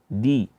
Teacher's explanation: Da itu jangan sampai kita bacanya dari ujung lidah dengan langit-langit. Tapi da itu dari ujung lidah dengan bertemu dengan pangkal gigi seri bagian atas. Ya, sehingga bacaannya di bukan di.